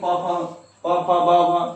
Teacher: प वर्ग जो है इसे ओष्ठ से पकड़ लेते हैं